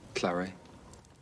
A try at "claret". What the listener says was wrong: You pronounce the T, just as in fillet.